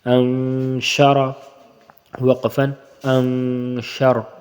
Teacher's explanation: اس کو نون کو کھینچ کر پڑھیں گے اور زبان اوپر نہیں لگے گی ، انشر وقفن، انشر، اور را موٹا ہی رہے گا دونوں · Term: اخفا